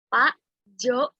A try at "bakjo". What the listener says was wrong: Bukan Pak ya. Jangan Pak Jo. Itu salah. B ya. Bakjo.